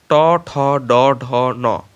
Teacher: এই ব্যঞ্জন ধ্বনিগুলি উচ্চারণের সময় জিভের অগ্রভাগ উল্টিয়ে মূর্ধা স্পর্শ করে, এই জন্য এগুলোকে মূর্ধন্য ধ্বনি বা ট বর্গীয় ধ্বনিও বলা হয়।